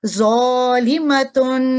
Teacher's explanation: تو یہ زو جو ہے یہ موٹا یعنی مفخم ادا ہوگا، جبکہ پہلے والا ذال اور یزید کا جو زا ہے یہ ترقیق ادا ہوں گے، یعنی باریکی کے ساتھ۔